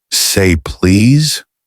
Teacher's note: said with rising intonation like a question